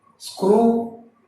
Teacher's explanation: Look at that, there is no vowel in between. No vowel between S and K, no vowel between K and R. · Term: three consonants coming together